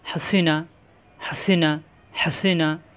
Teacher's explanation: হা কণ্ঠনালীর মাঝখানে চাপ দিয়ে, সিনজের সি জিহ্বা নিচে চাপ দিয়ে, নুন জবর না, জিহ্বার আগা উপরে তালুতে।